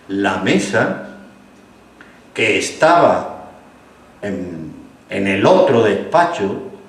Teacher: en el otro despacho como hay que entenderlo, como si fuera una sola palabra, así segmentamos prosódicamente el habla